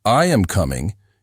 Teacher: your voice falls at the end to show it is a statement.